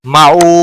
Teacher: معو واو مدہ ہے ایک الف کے برابر کھینچ کر پڑھیں گے